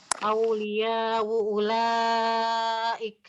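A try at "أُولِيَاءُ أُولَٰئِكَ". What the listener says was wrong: Tahqiq hamzah keduanya coba ulang saja.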